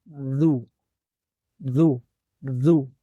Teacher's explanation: مخرج کا خیال کریں گے، اور مخرج ذال کا کیا ہے کہ زبان کی نوک سامنے دانتوں کے سروں کو لگاتے ہوئے حرف ذال کی آواز ادا کی جاتی ہے